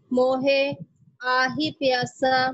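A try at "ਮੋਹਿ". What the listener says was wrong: मोहे कृपा एक मिनट ध्यान दियो मोहे कहन नाल ऐ तुहाडा जदों उच्चारण करदे हो मोहे ऐ बिल्कुल गलत है ऐ हाही नूं लाल लग रही है ये शब्द है मोहे ये हाही दी सिहारी पढ़नी है हाहे की सिहारी ला विच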